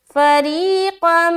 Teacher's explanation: اب یہاں پر دیکھیے قاف کو میم سے جو ملایا، یہاں پر دیکھیے دو زبر کی تنوین ہے نا، دو زبر کی تنوین کے بعد حرف میم آ رہا ہے، تو یہاں پر ہم کیا کریں گے، ادغام کریں گے. اور ادغام کی کون سی قسم ہوگی، یہاں پر ادغام ناقص ہوگی، کیونکہ ادغام ناقص جو ہے کتنے حرف میں ہوتا ہے، 4 حرف میں ہوتا ہے، یا واو میم نون.